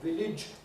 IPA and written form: ˈvɪlɪʤ (village)